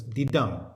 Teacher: two syllables the first is unstressed the second is stressed so goes dee dum that's an I am dee dum five